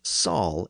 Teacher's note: when a word began with an SH sound, northerners would convert it into a simple S sound. So a word like shall was often pronounced as sal in the north, and that's the way the word is rendered here in John's northern speech.